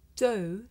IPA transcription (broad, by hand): dəʊ